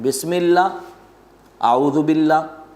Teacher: تو اہل عرب ہمیشہ لفظ اللہ سے پہلے حرف کے نیچے زیر ہو تو اس کو باریک پڑھتے ہیں۔